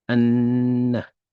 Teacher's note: The lam is silent. So we are pronouncing or articulating the a straight into the noon with the shadda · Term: sun letter